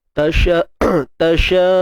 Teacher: Pastikan ada bunyi hamzah yang mati betul-betul bunyi dia. Jangan buat bunyi kosong pula.